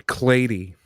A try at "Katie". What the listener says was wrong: No. Katie. There's no L in there. Get it right.